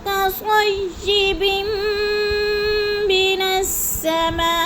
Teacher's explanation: قصیبم 2 زیر تنوین میم مشدد آ گیا ہے، تو ادھر ہم نے ادغام کرنا ہے، سختی سے جماؤ کے ساتھ پڑھنا ہے۔ من السماء پہ مد متصل ہے، یعنی 4 الفی مد ہے، 4 حرکات کے برابر ہم نے اس کو کھینچ کر پڑھنا ہے۔